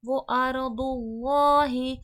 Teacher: ضاد حرف مستعلیہ ہے، موٹے حرفوں میں سے ہے، موٹا کر کے پڑھا جائے گا۔